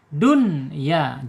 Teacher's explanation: Ketika ada nun sukun gabung dengan ya berarti harus dibaca idhar ya. Dun ya jelas ya.